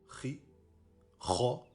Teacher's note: Khi, Kha, et non Khe, car c'est une lettre emphatique, c'est un A grave.